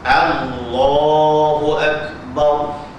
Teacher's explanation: Itu lam yang wajib ditebalkan, yang wajib ditaghlizkan.